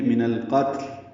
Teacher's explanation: نہ تا پہ قلقلہ ہو نہ لام پہ قلقلہ ہو